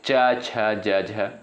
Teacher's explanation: च वर्ग के अंतर्गत जो भी वर्ण आते हैं जैसे च, छ, ज, झ। ठीक है? ये आपका तालु से उच्चारित होते हैं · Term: तालव्य